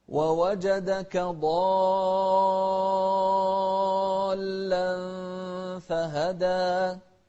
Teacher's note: شوف عد معي 6 حركات، لأن هذا المد مد لازم